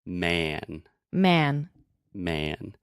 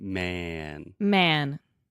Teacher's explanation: So actually, what I'm doing, I'm saying ma, like a cat. But when I am closing my mouth with the N, the quality of the sound changes and it automatically makes more of a eh sound